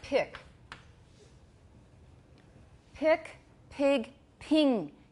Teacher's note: can you hear that vowel getting higher